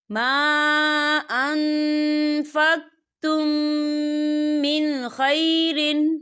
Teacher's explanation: میم ساکن کے بعد میم آ رہا ہے، تو یہاں پر ادغام شفی ہوگا، تو ہم یہاں غنہ کریں گے